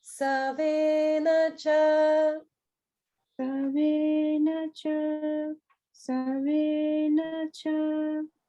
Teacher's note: Just watch out for savena. The sa goes down.